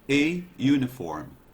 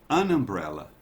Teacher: Porque essa vogal aqui, you, tem o som consonantal, como se fosse a palavra, o pronome you em inglês.